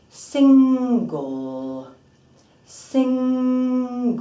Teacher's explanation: you'll feel that banana shape in your tongue and you're working with that muscularity at the back of the tongue for the dark L